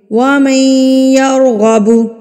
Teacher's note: جیسے کہ ہمارے سبق میں دیکھیے، ہمارے سبق میں اگر آپ یہاں پہ دیکھیں تو وَمَن پہ دیکھیں، نون ساکن کے بعد یا آیا ہے. نون ساکن کے بعد یا آیا ہے، ہم یہاں پر غنہ کر کے پڑھیں گے. وَمَن، ناک میں آواز کو لے جائیں گے